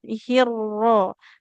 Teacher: Jadi jangan hiu Rahman, nggak hiu ya. Tapi langsung ke huruf ro-nya. Hirro. Tidak boleh seperti hir, ada wawu sukunnya ya.